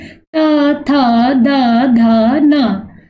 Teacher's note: तो ट वर्ग जो पूरा है वो मूर्धा से बोला जाता है, और ता वर्ग बोलेंगे तो आपकी जीभ जो है वो दांतों से टकराएगी